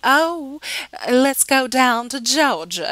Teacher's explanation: We have that rich southern accent. Oh, let's go down to Georgia and we elongate our A's and vowel sounds